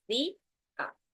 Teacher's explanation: la palabra día tiene un hiato entre la I, que es la vocal cerrada, que es la tónica, y la vocal abierta, ¿no? Lo que provoca que ambas vocales se pronuncien en sílabas separadas.